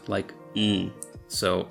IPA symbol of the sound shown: w̃